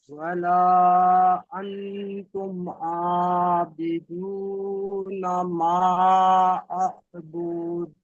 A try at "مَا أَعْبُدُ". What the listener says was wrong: আবুদ বলে টান দিচ্ছেন, বুদ টান হবে না, বা দাল পেশ বুদ কলকলা হবে। আবুদ, বুদ টান হবে না।